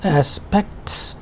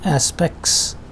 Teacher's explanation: in quick pronunciation it becomes aspects without t